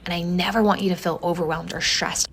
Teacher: Notice that she says the first S sound as an SH sound, stressed. This is called S retraction, and we're not sure where in the country it's found because it hasn't been well documented.